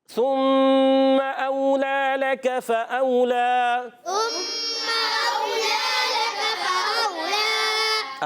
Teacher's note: میم مشدد ذرا رک کر ادا کریں گے، غنہ بھی کریں گے. کلمہ کا غنہ بھی کرنا ہے. · لام پر کھڑا زبر ایک الف کھینچیں گے